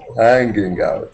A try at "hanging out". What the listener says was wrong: No G sound, by the way. Hanging out. No gut.